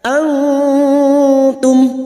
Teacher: Nun sukun bertemu ta ikhfa hakiki, kita samarkan bunyi nun sukun dan mendengung selama 3 harokat.